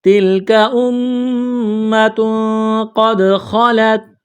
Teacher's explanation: یہاں میم مشدد پر غنہ کریں گے